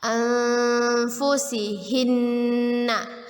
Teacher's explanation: Nun bertasydid adalah gunnah. Kita dengungkan 2 harokat.